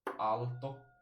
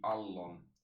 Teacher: So the LT moves, shifts into a double L sound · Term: consonant gradation